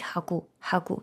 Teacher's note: ця літера О лежача? Вона має призвук від літери у.